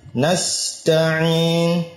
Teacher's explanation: Nasta'in, sinya rakhawa, berjalan. Ya, berjalan. Nasta'in, dijalankan.